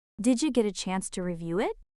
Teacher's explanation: That soft J in dija, did you feel it?